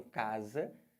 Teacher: Já o S, nessa palavra, o S entre vogais na língua portuguesa tem som de Z. Então aqui eu botei o Z para representar.